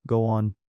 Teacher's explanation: Linking connects sounds between words like go on, sounding like go one.